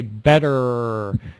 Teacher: I say better and I'm pushing my lips forward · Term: R sound